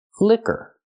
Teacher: put the stress on it first syllable liquor use a short I sound like this is Li lick · It's two syllables. Put the stress on the first syllable.